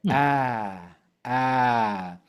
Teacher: temos um som que está entre o a e o e